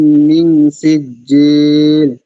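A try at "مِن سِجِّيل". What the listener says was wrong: সিজিল, মিনে গুণনা করেন। মিন সিজিল।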